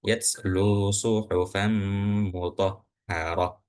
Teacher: seakan-akan dari ta marbutah itu dirubah ke huruf ha